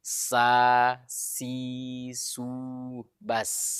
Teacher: Sin ini tertipis, ya, miriplah huruf S kalau dalam bahasa Indonesia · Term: huruf sin